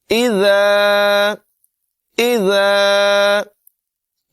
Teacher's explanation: ذال جو ہے اس میں سیٹی کی آواز پیدا نہیں ہونے دیں گے، بغیر سیٹی کے اس کو پڑھیں گے نرمی کے ساتھ۔ اذا، اذا جاء، یہاں پر مد متصل ہے، اسے 3 الف کی مقدار تقریباً 3 سیکنڈ لمبا کر کے پڑھیں گے۔